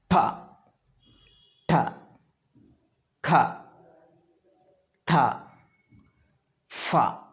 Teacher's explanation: when we articulate these sounds, our vocal cords don't vibrate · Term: voiceless sounds